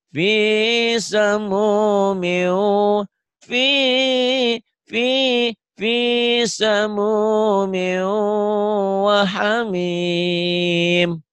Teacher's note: Miunya ditahan ya, idgham bigunanya ya.